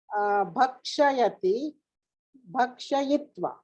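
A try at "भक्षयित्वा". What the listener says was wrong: Bhakshayitva. Very good.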